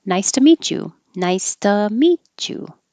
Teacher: the t and the y together make a cha